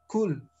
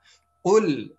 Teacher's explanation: dengan tidak mengalirkan udara dan juga menggunakan bagian yang paling belakang dari lidah untuk mengucapkan huruf qaf